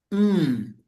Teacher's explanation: mim itu kedua bibir. Nah, di sini ada bunyi sedikit, bunyi khayshum, bunyi sengau. Hmm, jadi agak ke hidung.